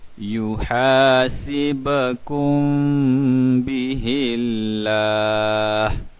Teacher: Kita akan baca yuhasibakum bihillah. Sib, ba, apabila tanda sukun ada qalqalah, kena bunyikan sib